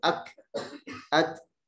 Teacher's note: Sudah ada sifat hams. Sudah ada sifat hamsnya. Jadi dia terlepas gitu.